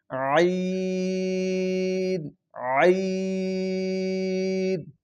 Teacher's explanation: دبائیں گے بالکل حلق کے درمیان میں لفظ کو دبائیں گے، اور اس کو لفظ کو ادا کریں جیسے ہا میں خالی آواز بالکل حلق کے درمیان سے نکالی تھی، وہیں سے سیم اسی جگہ سے اس لفظ کو ادا کریں، عین عین۔